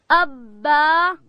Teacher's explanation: با ادا کیږي د دواړو شونډانو د یو ځای کېدو څخه، د شونډانو د لندې حصې څخه.